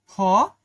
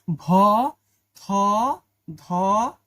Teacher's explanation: তোমাকে একটু ফুসফুস থেকে বেশি বাতাস ঠেলে বের করে দিতে হবে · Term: মহাপ্রাণ ধ্বনি